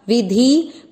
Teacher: वी और धी दोनों मात्रा छोटी, लंबा नहीं खींचना